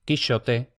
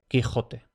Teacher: Ahora bien, uno de los más tardíos fue precisamente el de la velarización, o sea, el paso de la fricativa sh, típica de la Edad Media, hasta la actual j, Quixote, Quijote.